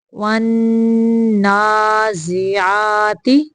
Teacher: نون مشدد کا غنہ ہے اور نون کے اوپر کھڑی ہے، اس لیے اس کو لمبا کرنا ہے